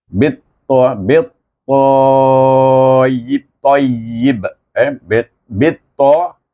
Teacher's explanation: Masukkan ba kepada huruf ta terus. Lupakan alif lam itu. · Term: idgham syamsi